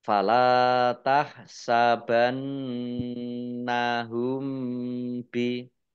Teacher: Mim sukun bertemu dengan huruf ba, bacaan ikhfa safawi, dibaca samar-samar. Ini satu-satunya huruf ya yang bacaan mim sukun itu ikhfa safawi.